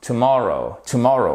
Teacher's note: vous avez votre apostrophe qui signifie que c'est cette deuxième syllabe qui est accentuée